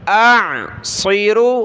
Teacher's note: ارانی اعصر، حمزہ عین زبر اع، صاد اور را کلرفل ہے، موٹا پڑھیں گے دونوں کو